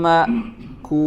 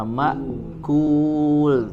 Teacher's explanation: hanya cukup dengan ada jeda sedikit ya, menutup pita suara ma'kul tanpa ada ditekan ya. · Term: hamzah